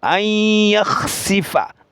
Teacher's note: এখানে নুন সাকিনের বাম পাশে ইয়া আসছে, ঈদগামে বা গুন্নার 4টি হরফ থেকে একটি হরফ ঈদগাম সহকারে গুন্না করিয়া পড়তে হবে।